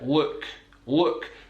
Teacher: it's coming from the back of the mouth with the tongue down, rather than allow at the front of the mouth. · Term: dark L